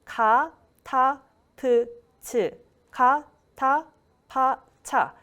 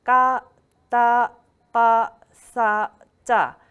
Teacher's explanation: for aspirated sounds, your air should be coming out from your mouth. But for tense sounds, you use air coming out from your throat, but it will be blocked in your throat. But you need strong energy to pronounce these tense sounds.